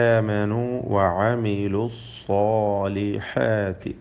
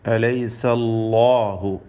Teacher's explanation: അല്ലാഹു എന്ന തഫ്ഖീം ചെയ്തുകൊണ്ട് ലാമിന ഉച്ചരിക്കുമ്പോഴുള്ള ആ ശബ്ദം പ്രത്യേകം ശ്രദ്ധിക്കുക, മഖ്റജ് മാറിപ്പോവരുത്.